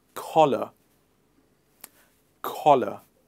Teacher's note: very gentle and very soft not the k sound from mother tongue hindi the curse on softer version of it collar collar i liked